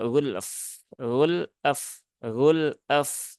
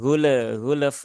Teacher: Nah, di sini pun juga sama dengan konsep yang sebelumnya tadi, yaitu tunaikan dari sifat lam, kemudian tunaikan dari sifat fa-nya ya. Lam itu sifatnya tawasuk, kemudian fa itu sifatnya rokhawah.